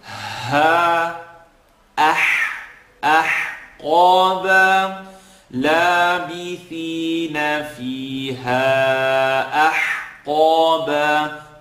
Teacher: Now we have the ha that we're stretching for a minimum here of 3, and we have alif, then ha, second part of the throat.